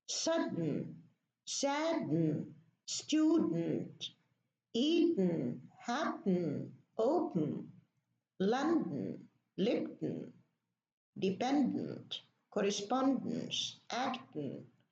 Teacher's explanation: we do not pronounce the vowel between the N and the D or the N and the T. And what we do in order to do that, we leave the tongue behind the teeth on the alveolar ridge.